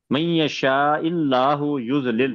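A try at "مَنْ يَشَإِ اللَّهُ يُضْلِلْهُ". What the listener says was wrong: من یشاء اللہ، شین کو بھی چھوٹے رکھیں. اللہ لام کو لمبا کرنا ہے.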